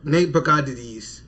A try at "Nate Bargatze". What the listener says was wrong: You added so many syllables to that man's name for no reason.